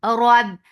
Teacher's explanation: Ba will get sifa of shidda. No flow of sound.